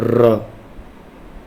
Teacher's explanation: र क्या होता है, ये लुंठित होता है, लुंठित मतलब जीभ इसमें क्या करती है, लुढ़कती है। जैसे आपने बोला र, तो थोड़ा सा लुढ़केगी जीभ, ठीक है, लुंठित।